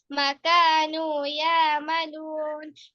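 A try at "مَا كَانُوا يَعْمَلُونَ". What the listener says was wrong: কেন আমরা একটু এখানে বললাম মা টানতে হবে, জবরের পর খালি আলিফ থাকলে তখন কি শুনুনি? মা কানু ইয়ামালু, তুমি মা কানু বললে, এটাই তো সেই জবরের পর খালি আলিফ, তাই না?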